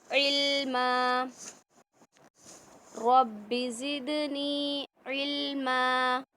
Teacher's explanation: रब्बि ज़िदनी, दाल में कलकला, नी में या मद्दा, इल्मा, इल्मा नहीं करेंगे, लाम में कलकला बिल्कुल नहीं होगा